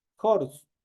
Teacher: Esta H obviamente se transforma el momento de pronunciarlo como una J.